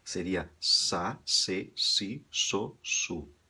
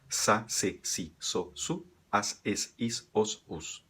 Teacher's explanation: Tem uma pequena diferença na pronúncia, onde o espanhol aqui da Espanha se assovia um pouquinho